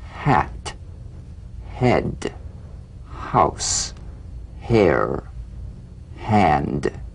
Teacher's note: of the sound that follows play the H gently without excess breath feel nothing more than a slight hesitation before the vowel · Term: gentle H